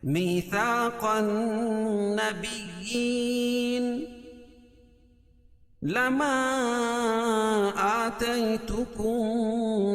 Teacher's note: میثاق النبیین لما آتيتكم من كتاب وحكمة، لما اور آتيتكم دونوں الگ الگ کلمے ہیں، تو یہاں مد منفصل ہوگا، اس میں قصر اور توسط ہے، یعنی ایک الف سے لے کر 2 الف تک اس کو کھینچ کے پڑھیں گے